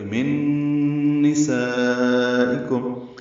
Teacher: نون ساکن کے بعد نون آیا تو ادغام ہوگا، یہ غنہ کریں گے